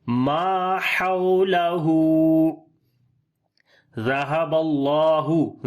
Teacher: ذال کو نرم پڑھیں گے، اللہ کے نام کو موٹا پڑھیں گے · ہا کو گلے کے درمیان والے حصے سے پڑھیں گے